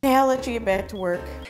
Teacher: since I'll and let end and begin in the same sound the L it will only be pronounced one time